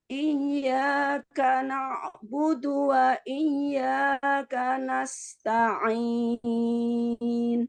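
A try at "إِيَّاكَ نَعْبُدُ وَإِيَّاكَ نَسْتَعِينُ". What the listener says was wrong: Iya, huruf dalnya dijelaskan lagi. Iyyaka na'budu wa iyyaka nasta'in.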